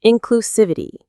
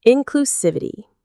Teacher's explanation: The main stress is on the civ syllable.